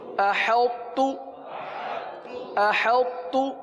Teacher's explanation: حمزہ زبر ا، حا طا تا زبر حط، احط، تا پیش تو، احط، احط. اور درمیان میں طا کی صفت باقی رہے گی. طا چونکہ قوی حرف ہے، اس کی صفت باقی رہے گی. یہاں پر تا بھی پڑھیں گے اور طا بھی پڑھیں گے.